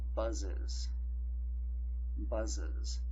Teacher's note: So now our plural will not be just one syllable, it will be two syllables. And our ES syllable will be pronounced is. So your plural will be pronounced buzzes.